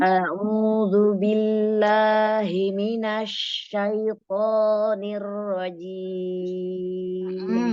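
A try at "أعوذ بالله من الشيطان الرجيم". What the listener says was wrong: Tinggal huruf ain ya. Jernihkan huruf ain.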